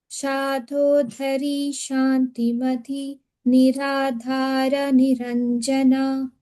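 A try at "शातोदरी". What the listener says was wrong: The Shatodari, make sure you're not putting any stress anywhere, okay? plain, okay.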